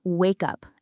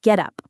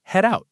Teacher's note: The consonant at the end of the first word links right into the vowel at the beginning of the next. That is called consonant to vowel linking and it happens all the time in natural English speech.